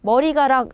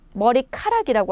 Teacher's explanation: 머리카락이라고 하시잖아요. 바로 히읗이 덧나서 히읗과 기역 가락이 합쳐져서 키역이 되는 거예요